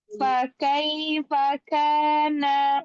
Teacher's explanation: huruf kaf ada hamasnya, tapi dia punya sifat kuat, namanya syiddah. Maka jangan hamas semua.